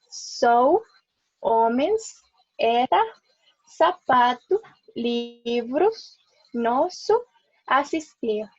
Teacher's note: en el inicio, en el final o antes de una consonante, bueno, y también la doble S suenan como una S, así como lo pronunciamos en español.